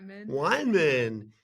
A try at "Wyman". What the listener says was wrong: It's Wyman, not wine. Yeah, like Wyman.